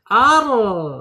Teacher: Ar kita ketika bergetar ditarik ya lidahnya ke belakang namanya inhirab